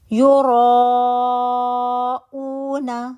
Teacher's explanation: را تو الف مدہ بن رہی ہے، آپ نے اس کو کھینچ لیا 4 to 5 کاؤنٹ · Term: مد متصل واجب